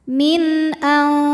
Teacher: nun sukun bertemu huruf halqi atau huruf tenggorokan yaitu Hamzah maka Nun dibaca jelas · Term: izhar halqi